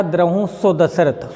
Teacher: सो दशरथ हमने एक साथ जोड़ करके कहा, इसलिए जो सो का उच्चारण हो रहा है वो लघु की तरह से हो रहा है, ह्रस्व की तरह से हो रहा है, इसलिए इसका सिंगल मात्रा होगा।